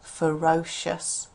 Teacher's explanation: This e r on the end. The e usually sounds as uh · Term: schwa